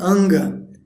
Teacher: O A está na frente, ele é nasalizado por esse Nga, que depois é seguido pelo Ga. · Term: N gutural